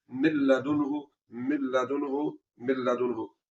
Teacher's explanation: یہاں پر بھی ہم نے نون ساکن کے بعد لام کے آ جانے کی وجہ سے یہاں پر غنہ نہیں کرنا